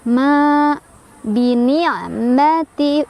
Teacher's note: ma ada mad tabi'i karena ada alif, sebelumnya ada fathah. Bacanya panjang 2 harokat